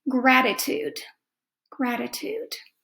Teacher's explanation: it's a t but that t sounds a little bit like a d